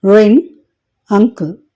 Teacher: అలాగే ఈ పిక్చర్ని గమనించినట్లయితే ఉదాహరణలు గమనిస్తే రింగ్, అంకుల్. ఇక్కడ టంగ్ వేలార్ని లేదా వేలంని టచ్ చేసినప్పుడు గాలి నోస్ నుండి బయటికి రావడం గమనించవచ్చు